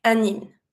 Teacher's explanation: So the word is hymne, but you say un hymne. Pronounce the N with the Y.